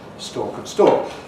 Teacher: for me and for most English people, stork and stalk are identical. We make no distinction. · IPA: /stɔːk/